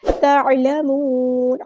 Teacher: عین کو مستحلق middle throat سے ادا کرنا ہے